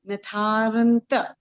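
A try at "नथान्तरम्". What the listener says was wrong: हाँ र पूरा नहीं बोलना है क्योंकि वो रेफ है ऊपर है ना तो आधा ही बोलना है हाँ हाँ बस नथांतरम बेटा र आना भी चाहिए और पूरा नहीं आना चाहिए बस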